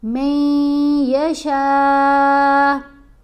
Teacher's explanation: نون خاموش ہے نا دونوں جگہوں پر. میم کو ہم نے یا سے ملانا ہے تو غنہ کرتے ہوئے